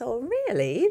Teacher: she's using this falling rising pitch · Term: fall rise